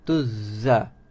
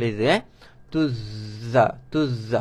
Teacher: Zai pastikan dia ada bunyi lebah, safir.